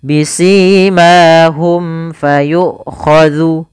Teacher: mim mati bertemu dengan huruf fa. Maka ini kita namakan dengan bacaan izhar syafawi yaitu suara huruf mim dibaca dengan jelas. Bisimahum fayuku.